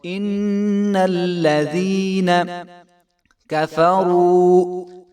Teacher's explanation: واو مدہ ہے تو اس کو 1 الف کے برابر لمبا کریں گے